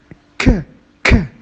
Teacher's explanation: And at the end, when we say k, after the explosion, there is a stop. So it is a voiceless velar plosive stop.